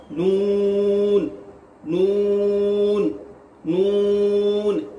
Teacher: इसके बाद नून है, नून नून नून। जुबान का किनारा ऊपर वाले दांतों के मसूड़े से अदा होता है